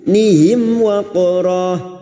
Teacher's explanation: mim sukun bertemu wawu idhar safawi, mim sukun dibaca jelas tanpa mendengung.